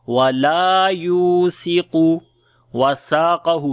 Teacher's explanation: وَلَا لام کو لمبا کریں گے، الف مدہ ہے، یا کو لمبا کریں گے، واو مدہ ہے، سا کو نرم پڑھیں گے، قاف کو موٹا پڑھیں گے